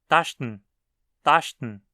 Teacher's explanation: Perceba como “en” costuma ser reduzido só para um som de “n”